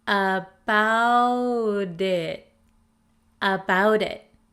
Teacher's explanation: the flap T in American English sounds like a soft D sound